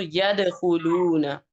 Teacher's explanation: دال پہ پھر کلکلا ہو رہا ہے